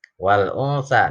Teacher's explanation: Ini alif lamnya jelas, maka disebut alif lam qamariyah. Nun mati ketemu sa itu ikhfa, sa-nya berharokat tegak berdiri.